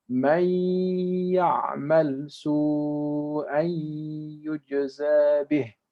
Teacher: the noon disappears and we're connecting the whole word as if there is no noon